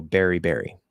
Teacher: most Americans have this merger where uh they're pronounced the same